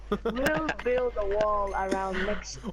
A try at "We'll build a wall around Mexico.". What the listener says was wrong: You've got to have the emphasis on the A. You've got to say wall.